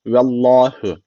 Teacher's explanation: Allah lafzı burada kalın okunuyor Allah lafzı niye kalın okunuyor Çünkü öncesindeki harfin harekesi üstte yani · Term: Allah lafzı kalın